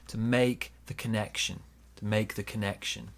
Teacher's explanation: small stress on make, bigger stress on connection.